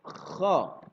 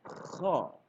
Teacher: Kha berada di pangkal lidah. Kha. Seperti yang lazim kita dengarkan, guru-guru kita menyampaikan seperti suara orang yang mendengkur.